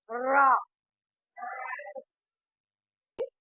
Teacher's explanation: மேல் அன்னத்தின் நடுப்பகுதியை தொடுவதால் ரா பிறக்கின்றது அழுத்தமாக இந்த ரா உச்சரிக்கப்படுகிறது ரா சுழற்றி தடை எண்ணத்தை தொடுகின்ற பொழுது இது